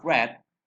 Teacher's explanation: The R sound at the beginning of red is formed with the tongue tip raised and curved back near the alveolar ridge.